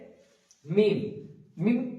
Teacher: তো তারপর আছে মিম, এখানে মিম, মিম একদম সোজা, মিম দুটো ঠোঁট একসাথে মিলিত হবে, মিম, এবং লাস্ট আবার একবার মিলে যাবে।